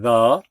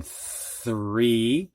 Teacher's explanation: th voiced in the th unvoiced in three